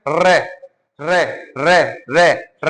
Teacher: हमारी जीभ है ना 2-3 बार टच कर रही है, ऊपरी टच कर रही है एक साथ स्पीड से, तो वो है आपका रे का उच्चारण कैसा है, जीभ के घर्षण के साथ।